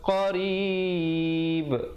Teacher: ra di situ dibacakan nipis